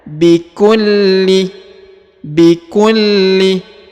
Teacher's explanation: huruf lam ditekan dan ditahan dua harakat karena di sini terdapat tanda tasdid